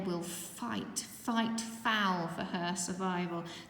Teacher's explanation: those fricatives that alliteration of the f sound